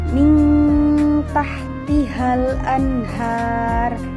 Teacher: Nah, contohnya di situ ada nun sukun bertemu dengan salah satu huruf ikhfa yaitu ta. Maka huruf nunnya disamarkan menjadi bunyi ang, yaitu min tahtihal anhar.